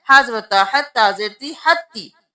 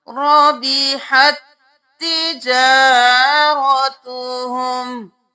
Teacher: اب یہاں پہ رَبِحَتْ تِجَارَتُهُمْ نہیں کرنا، ہم نے تا کو چھوڑ دینا ہے، ہا کو اس تا کے ساتھ ملانا ہے